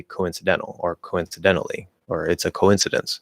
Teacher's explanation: this dropping of the o and keeping that linking w is a common variation in normal and faster speech